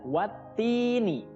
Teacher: Di situ ada alif lam bertemu dengan huruf ta, ya. Tidak boleh dibaca alif lamnya karena itu namanya alif lam syamsiyah. Jadi alif lamnya tidak dibaca, langsung masuk ke huruf setelahnya yaitu huruf ta.